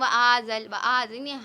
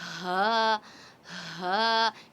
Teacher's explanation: ہ کی آواز اقصی حلق سے کلیئرلی شو ہونی چاہیے. کچھ بچے پڑھتے ہیں وآزل، وآزل، ہم ہا کو حمزہ کی ساؤنڈ سے تھوڑا مکس کر دیتے ہیں.